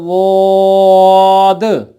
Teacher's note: ज़ुबान की बाईं साइड या ज़ुबान की दाईं साइड जो ऊपर के दाढ़ों को लगती है, जब वो जड़ों को लगे तो पढ़ा जाएगा ज़ाद। दाएं तरफ से आसानी से लग जाता है, बाईं से थोड़ा मुश्किल लगता है, और दोनों तरफ तो मुश्किल ही होता है, लेकिन जहां आसानी से अदा हो रहा हो कोशिश ये करनी है।